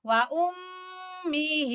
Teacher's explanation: میم مشدد کا غنہ کریں گے اور ہی کھینچیں گے ، یہ کھڑی زیر اور یا مدہ برابر ہوتے ہیں، وَأُمِّهِ